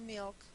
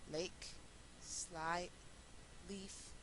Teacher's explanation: Y le llaman Dark L o L oscura o L velar. Y ocurre en realidad después de el núcleo. El núcleo de las sílabas en español es la vocal, entonces las L's que ocurren después de esas sílabas y postnucleares las vamos a pronunciar como O, y las L's que son prenucleares van a ser L.